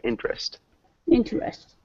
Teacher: we don't really pronounce the second e so pretend it's not there interest interest close two syllables int interest interest interest there you